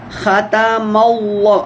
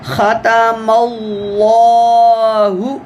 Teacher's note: اللہ سے پہلے مفتوح حرف ہے، یعنی زبر والا حرف ہے، تو اللہ کو موٹا کر کے پڑھنا ہے